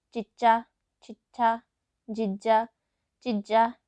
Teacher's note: ਜਿਨ੍ਹਾਂ ਧੁਨੀਆਂ ਦੇ ਉਚਾਰਨ ਸਮੇਂ ਜੀਭ ਤਾਲੂ ਨਾਲ ਟੱਚ ਕਰਦੀ ਹੈ, ਉਹਨਾਂ ਨੂੰ ਤਾਲਵੀ ਧੁਨੀਆਂ ਕਿਹਾ ਜਾਂਦਾ ਹੈ।